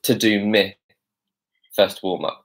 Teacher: one of the first features of this accent and dialect is the fact that he says me instead of my